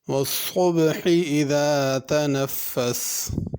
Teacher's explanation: صبح صاد صحیح ادا کرنا ہے، اس کو پر کر کے پڑھنا ہے، صبحی سین نہیں پڑھنی۔ والصبح بڑی ہا ہے، صبحی چھوٹی ہا کر کے نہیں پڑھنا۔